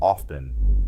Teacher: Remember that t is silent in often. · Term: silent t